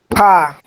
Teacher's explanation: নিচের ঠোঁটের পেট সামনে উপরের দুই দাঁতের আগার সঙ্গে লাগিয়ে। নিচের ঠোঁটের এই পেটটা উপরে দাঁতের সাথে লাগবে।